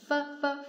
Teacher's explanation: 声带不振动，它的发音是比较重的